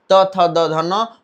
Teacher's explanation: त वर्ग का उच्चारण दंत से